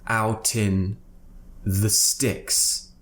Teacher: out finishes with a consonant, T. So we're going to use that to join to the vowel at the beginning of in. So tin is essentially what we're saying.